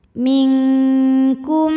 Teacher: Maka nunnya dibunyikan samar-samar siap-siap menuju kaf disertai bunyi dengung. Dengungnya besar ya karena kaf makhrajnya jauh dari nun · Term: ikhfa, ikhfa ab'ad